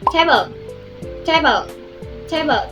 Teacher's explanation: Jadi C-nya itu ada sedikit hembusan angin di belakangnya tapi anginnya tipis ya, bukan yang tebal gitu.